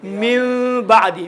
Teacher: नून साकिन और तनवीन दर हकीकत में क़ल्ब होंगे मीम में, मिन बादी, मिन नहीं पढ़ेंगे मिन बादी। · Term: इक़लाब